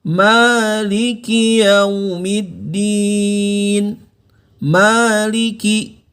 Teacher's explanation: Ingat kalau fathah berdiri dia dibaca panjang ya, mad ya. Cukup dibaca 2 harokat atau 2 ketukan.